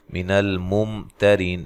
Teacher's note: یہاں میم ساکن کا اظہار ہے، غنہ نہیں کرنا۔ تیرین، تا کو باریک، ری یا مدہ، را کو باریک، وقف کی صورت میں مد کر سکتے ہیں۔ · لام کو ہلانا نہیں ہے، میم ساکن کو بھی نہیں ہلانا، اور یہاں میم ساکن کا اظہار ہے، غنہ نہیں کرنا۔